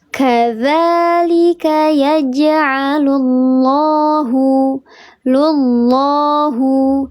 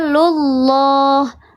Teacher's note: Lafzul jalalah yang sebelumnya harakatnya dhammah atau fathah maka dibaca tebal, namanya lafzul jalalah tafkhim.